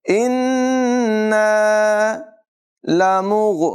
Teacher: गैन की आवाज़ हलक के ऊपर वाले हिस्से से अदा होती है, इसको पुर आवाज़ में पढ़ेंगे।